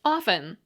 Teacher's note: the way to pronounce often was often, like off, with a little syllabic N at the end. Often was like soften, listen, and glisten, I was warned, with a silent T.